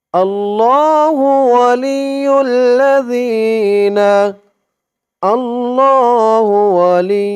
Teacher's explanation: জালের আওয়াজটা একদম নরম পাতলা করতে হবে জিহ্বার মাথা উপরের দাঁতের মাথা লাগবে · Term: জালের উচ্চারণটা